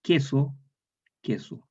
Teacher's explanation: la K es velar en español estándar